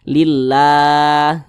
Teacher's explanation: maka kalimat Allah itu dibaca tipis dibaca tarqik